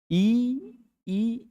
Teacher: इ ई स्पर्श तो नहीं होता लेकिन हवा तालु पर रहती है।